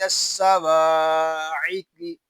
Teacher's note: قاف یہ حروف مستعلیہ میں سے ہے اس کو پر یعنی موٹا پڑھیں گے